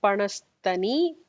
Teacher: the regular sa with a regular ta, not the stha